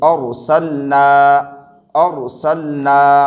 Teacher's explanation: جیسے یہاں پر دیکھیے، حمزہ را زبر اور، یہاں پر رائے ساکنہ ہے لیکن رائے ساکنہ سے پہلے زبر ہے لہذا اس را کو پر پڑھیں گے